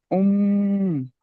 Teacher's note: উম গুন্না হবে, একটু হ্যাঁ, আওয়াজটি নাকে তুলে